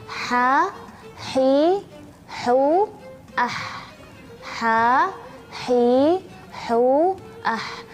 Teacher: suara ha ini ada sedikit istimewanya. Istimewanya adalah dia memiliki suara seperti suara berdesir